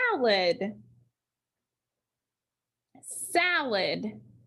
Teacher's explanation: so we need to make that a say ah salad salad that first syllable is accented